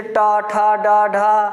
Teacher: ये जो होते हैं टा वर्ग किसमें वो बोले जाएंगे, जैसे टा, ठा, डा, ढा, ये सभी कहाँ बोले जाएंगे, मूर्धा से बोले जाएंगे